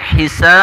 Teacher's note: Apabila waqaf, apabila di akhir ayat menjadi hisab, itu bisa 6 harokat. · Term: mad ari disukun